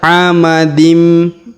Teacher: huruf tanwin in bertemu mim bertasdid. Maka tanwin innya menghilang melebur ke huruf mim ya